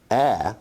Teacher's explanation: is a low front unrounded vowel